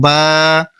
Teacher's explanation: তারপরে বা উচ্চারণ করার সময় দুই ঠোটের যে ভেজা জায়গা রয়েছে একটু ভিতর দিকে সেখান থেকে উচ্চারণ করবেন